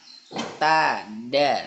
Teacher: makhrajnya yaitu berada di ujung lidah menyentuh ke gusi gigi seri atas. Macam huruf ta. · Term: huruf dal